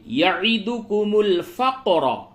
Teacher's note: قاف پہ قلقلہ کیجئے اور را کو پڑھ کیجئے